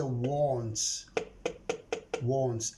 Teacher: t is voiceless sound. When I add s, I pronounce it as se. So I say wants.